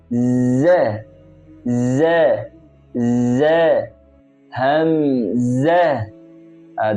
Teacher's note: আমাদেরকে মনে রাখতে হবে এখানে যা রয়েছে, আর যা হলো জিহ্বার অগ্রভাগ, সামনের দাঁতের গোড়া থেকে উচ্চারণ হবে।